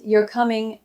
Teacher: if I say it flat, you're coming, I might just be confirming something